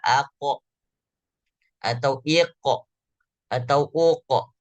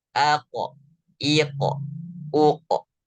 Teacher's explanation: sifat yang populer daripada huruf qaf itu sendiri adalah sifat mantul atau sifat qalqalah. Jadi ada pantulan. Saat dia berharokat sukun, maka dibaca ako atau iqo atau uqo.